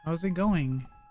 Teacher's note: You barely hear it, but there is a slight G at the end. It's just that you're running out of air at the end, right?